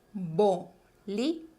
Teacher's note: Tienen que recordar que estas dos consonantes tienen el mismo sonido. Es bilabial.